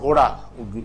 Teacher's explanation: ऊपर गया तुरंत चला आया दिस इज फ्लैप